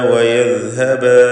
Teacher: നാവിൻ്റെ അറ്റത്തിൻ്റെ മുകൾ ഭാഗവും മേലെ മുൻപല്ലിൻ്റെ അറ്റവും എന്നതാണ് മഖ്റജ്. അത് വയദ്ഹബ എന്ന് ജായ പോലെയോ ഒന്നും ആയി പോവാതെ സൂക്ഷിക്കുക.